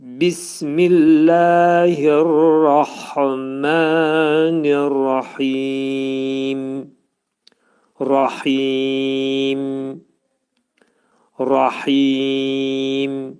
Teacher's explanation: Mim hərfini demək ağız yumulur və mim hərfi buna deyirlər şəfəvi dodaq hərfi olduğuna görə ağız yumulur və aşkara çıxarılır